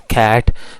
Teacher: the first sound is k, which is a voiceless sound